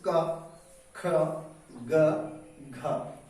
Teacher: जब आप का वर्ग बोलेंगे, देखिए फील करिए आप कि का वर्ग बोलते समय आपकी जो जीभ है वो आपके कंठ को बंद करने की कोशिश करती है